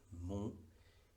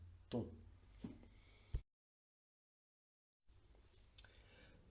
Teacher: en la nasalización las consonantes nasales como la N y la M no suenan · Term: vocal nasal